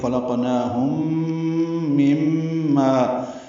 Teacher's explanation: میں ادغام ہوگا، ادغام شفوی ہے، غنہ کریں گے، خلقناہم مما، مما میں بھی غنہ ہے، میم مشدد دونوں جگہ